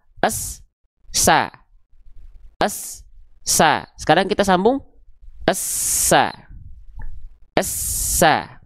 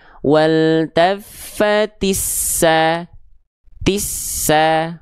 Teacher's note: Menuntaskan pelafalan huruf sin sukunnya dulu, ya. S-nya dulu baru masuk ke sa. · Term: huruf yang bertasydid